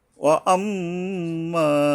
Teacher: এই মিমের উপরে গুণনা করে আবার একালিপ টানতে হবে